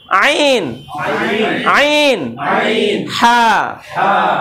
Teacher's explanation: হলকের মাঝে যদি নেন তাহলে উচ্চারণ আরেকটু ডিপলি চেপে গলা চেপে আদায় করে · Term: হলকের মাঝখান